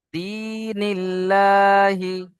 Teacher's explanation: লা হলো না, কারণ আল্লাহর শব্দের লামের আগে কি এসছে? নুনের নিচে জের এসছে, তাই বারিক হয়ে লা পড়তে হচ্ছে।